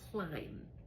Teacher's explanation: I don't say climb a b. I don't have the B sound. I just say here climb with just an M. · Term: silent B